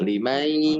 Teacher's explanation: Idgham itu memasukkan bigunnah dengan dengung. Jadi nunnya ini dimasukkan ke ya, sehingga iya yang tadinya tidak dengung jadi dengung karena ada huruf nun yang masuk ke huruf ya. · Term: idgham bigunnah